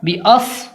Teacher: صاد کی آواز سین کی طرح ہوتی ہے، مگر سین کی آواز باریک ہوتی ہے اور صاد کی آواز تھوڑی موٹی ہوتی ہے، یعنی اس کو فرق کریں گے سین سے، اس کو پڑھیں گے اس طرح، باس۔